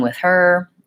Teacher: I have to move from the th tongue position with with my tongue between my teeth the air flowing to the her position where my tongue is back in my mouth my throat is open for the air to flow so if